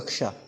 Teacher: का और मूर्धन्य श जिसको हम श बोलते हैं इससे मिलकर के बना है क्ष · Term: संयुक्त व्यंजन